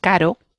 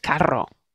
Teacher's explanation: Si hay dos, entonces es el sonido vibrante múltiple, que es carro, ¿vale?